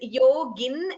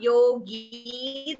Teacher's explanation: it is yogin, it is not yogi, there is no dirgha